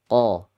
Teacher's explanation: Karena Qa dia di belakang paling ujung lidah sana. Paling dalam.